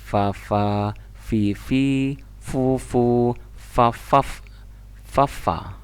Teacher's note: fa itu antara gigi atas dengan bibir bawah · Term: huruf fa